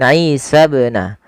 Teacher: Ini alifnya dianggap tidak ada. Dan ketika ada ba sukun, ini hukumnya sama sebagaimana dal, yaitu dia memiliki sifat bacaan qalqalah yang harus dipantulkan. Kesalahannya sama, kalau dia tidak mantul maka salah atau menambahkan hamzah.